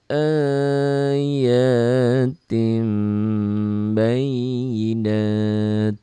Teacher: Nun matinya bunyi n-nya berubah jadi m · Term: iqlab